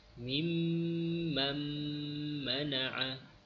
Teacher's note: nun dimasukkan ke dalam huruf mim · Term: idgham